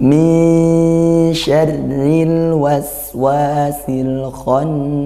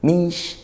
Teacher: Bacalah secara samar/tidak jelas . Bacalah nun sukun secara samar-samar. Jadi, itu bukan "min", tetapi tidak dibaca dengan jelas. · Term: ikhfa hakiki